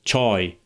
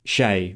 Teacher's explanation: Arabic has the word shai which comes from this Persian word and because Arabic has no ch sound, they pronounce it as shai with a sh